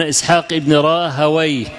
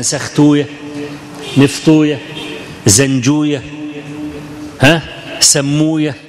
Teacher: النحاة يقولون وي، أما المحدثون يقولون أوية